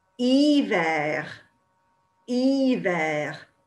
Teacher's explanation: it sounds like it starts with a vowel because the H is there, but they don't sound it